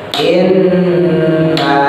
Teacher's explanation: nun tasdid, mim tasdid ditahan